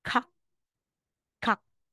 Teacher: Pero sa pag nasa final na po, ay wala na pong hangin. Kaya ito, kung bibigkasin natin to, ka, ka, ka.